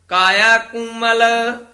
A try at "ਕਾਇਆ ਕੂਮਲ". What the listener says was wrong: ਜੀ ਕਾਇਆ ਕੂਮਲ, ਇਹ ਕੁਮਲ ਨਹੀਂ ਕਹਿਣਾ, ਦਲੈਂਕੜ ਲਾ ਕੇ ਉਚਾਰਨ ਕਰਨਾ ਹੈ, ਥੋੜਾ ਜਿਹਾ ਕਸ ਕੇ ਬੋਲਣਾ ਹੈ।